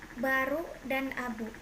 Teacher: kriterianya bunyi bilabial hambat bersuara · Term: konsonan B